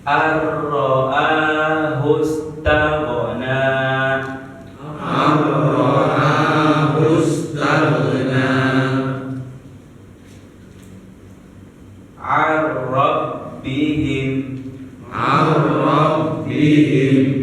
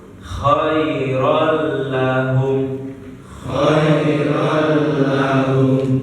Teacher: Nah, jadi dia langsung tidak usah dengung ya, langsung hurufnya huruf ro dan la, lam dan ro. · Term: idgham bilaguna